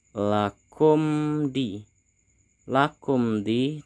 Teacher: terdapat huruf mim mati bertemu dengan huruf Dal maka disebut dengan izhar syafawi kita harus membacanya jelas